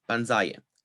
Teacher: stress is assigned to the penultimate syllable even if the stem is underlyingly stressed